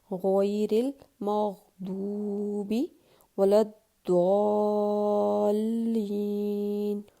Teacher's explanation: ٹھیک ہے، دیکھیں ہم اس میں دال کی بالکل بھی آواز نہیں لے کے آئیں گے، یعنی اس کو باریک نہیں پڑھیں گے ہم کبھی بھی، کیونکہ یہ ضاد ہے تو اس کو ہمیشہ ہر حالت میں پر ہی پڑھا جائے گا